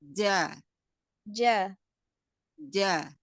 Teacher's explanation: Enggak ada ee dia sela untuk keluarnya nafas karena dia jahir ya tertahan nafasnya.